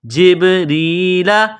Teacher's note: را کے نیچے زیر ہے، را کو باریک کرنا ہے، یا کے ساتھ پلس کرنا ہے۔